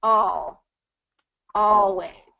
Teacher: the always kind of gets into more of that dark l sound